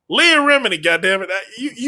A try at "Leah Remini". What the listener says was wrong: Stop skipping over that vowel. She's Italian. Stop it.